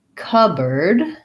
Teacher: this board gets reduced to a bird, just an sound, actually just like the word bird. And we don't say the P of cup. So we say cupboard, with first syllable stress.